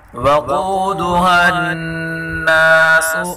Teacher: قاف کو پر پڑھیں گے اور نون مشدد گنہ کے ساتھ پڑھیں گے